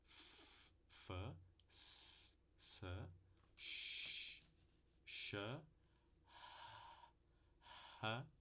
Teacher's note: a gente aproxima tanto dois articuladores que a gente causa uma turbulência do fluxo de ar que está passando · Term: sons fricativos surdos